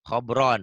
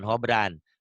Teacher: Khobron, bukan hobran. Bukan A tapi O, khobron. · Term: tafkhim